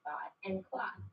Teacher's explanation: what we call a raised vowel in words like thought and clock